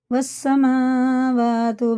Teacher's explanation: برابر الف لام چھوڑ دیں گے، سیدھا واو لگے گا سین میں، یہ لکھنے میں آئے دو حروف، پڑھنے میں نہیں آئیں گے، حروف شمسی ہیں۔